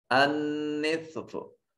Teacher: अन्निस्फ, नून मुशद्दद है, गुन्ना वाजिब होगा। स्वाद हरफ सिफत इस्तिला होने की वजह से मुफख्खम अदा होगा। · तो यहाँ नून को, ये जो ता के ऊपर नून बन रहा है, इस नून को मुफख्खम अदा करें, इस नून को अपने मखरज में छुपा कर अदा करेंगे। अन्निस्फ, नून मुशद्दद है, गुन्ना वाजिब होगा।